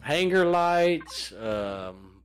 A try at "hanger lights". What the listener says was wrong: Sounds like you're saying anger lights.